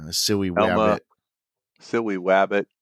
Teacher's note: Elmer Fudd had rhoticism, which is when you replace your L's and R's with W's